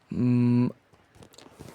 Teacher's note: closing both lips to block airflow in the mouth, while the soft palate lowers to allow air to escape through the nose